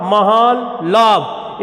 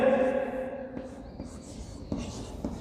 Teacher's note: न के बाद अगर ल आया है तो न अनुनासिक के साथ साथ आधे ल में परिवर्तित हो जाएगा